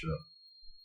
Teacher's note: श्र जो होता है इसमें तालु और मूर्धा दोनों का उपयोग होते हुए तालु मूर्धव्य वर्ण कहलाता है।